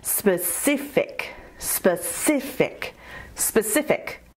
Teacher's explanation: Specific has three syllables, spa-si-fic. And you emphasize the second syllable